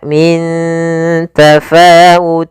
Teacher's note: cara membacanya yaitu samarkan tanwinnya ke huruf Fa maka Min tafau langsung ke makhraj huruf Fa makhraj huruf sendiri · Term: Ikhfa